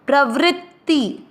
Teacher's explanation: आधा त भी बोलना है और फिर ती बोलना है